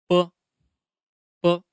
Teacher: the lips are tightly closed and then suddenly open so that airflow bursts out.